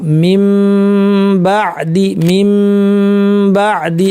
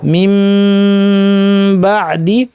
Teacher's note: এবং মিমকে ইখফা করব, অর্থাৎ মিম বাদি, মাখরাজের 2 প্রান্তকে বিচ্ছিন্ন না করে মিম থেকে বাতে চলে